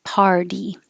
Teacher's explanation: the T changes to a d because it's between two voiced sounds ER and E